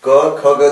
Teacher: क ख ग जो हम बोल रहे हैं वो हमारे कंठ से निकल रहा है